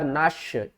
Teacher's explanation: تشدید کی وجہ سے شین کے اوپر سختی کریں گے